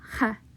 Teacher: they emphasized a more guttural ha sound than maybe you would hear from somebody within latin america